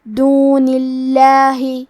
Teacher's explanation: کلمت اللہ کے لام کو ترقیق سے مطلب پتلی آواز میں پڑھیں گے